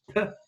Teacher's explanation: And you can stop the air at various parts of your vocal tract. You can do it at the front with the lips, okay? So you can have p, where you put your lips together. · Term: stops